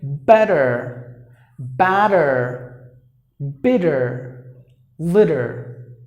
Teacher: if you find the letter T in between the vowels the T is pronounced like the D by the Americans